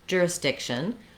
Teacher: So looking at the word jurisdiction, we have the primary stress on the dic syllable, and then we have some secondary stress on the jur syllable. And what that means is that's where you're going to find the clear vowels, and you're going to hold those syllables a little bit longer.